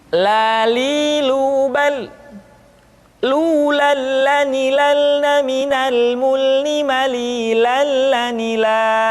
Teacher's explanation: diucapkan dengan mengangkat ujung lidah kita dengar disentuhkan dengan langit-langit di depan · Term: huruf la